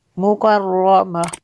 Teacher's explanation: را کو پر کرنا ہے